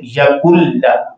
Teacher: मुदगम हो गया मुकम्मल तौर पर और इदगाम बिना गुन्ना, गुन्ना भी नहीं है